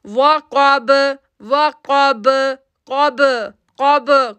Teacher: کاف موٹا لیٹر ہے، با کے ساتھ جڑے گا تو ایکو ساؤنڈ بن جائے گا